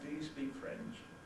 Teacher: The insistence type question, I insist that you answer, will have a falling tone.